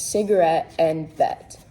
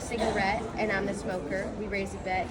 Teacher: slant rhyme being used in this verse, with the T sound being stressed on the words cigarette and bet